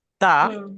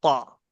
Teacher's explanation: جیسے تا اور طا، یہ دونوں کا مخرج سیم ہے. جب ہم آواز نکالتے ہیں تو ایسا لگتا ہے کہ سیم ہے، لیکن اس میں کیا ہے فرق؟ یہ پتلا پڑھا جائے گا، باریک پڑھا جائے گا، اور یہ موٹا پڑھا جائے گا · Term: حروف قریب الصوت